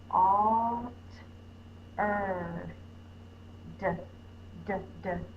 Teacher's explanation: My tongue is tapping on the top of my mouth like a drum. D. That reminds me the bubble comes first like a drum, up to the top, down and bump.